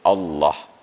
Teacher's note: Padahal Allah itu dia harus tafkhim, dibaca harus ada bunyi O-nya.